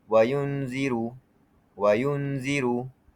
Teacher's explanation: Nun mati bertemu za. Cara baca bunyikan nun dengan jelas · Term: izhar halq, izhar halki